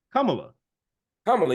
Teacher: the the emphasis on the first syllable not the second